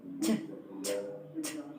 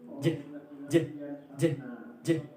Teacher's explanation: Ch, ch, ch, is voiceless, which means we do not use voice box. J, j, j, j is voice, which means we do use voice box. You feel your throat vibrating.